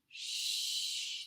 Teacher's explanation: the tongue is on the roof of my mouth and I'm becoming like the ocean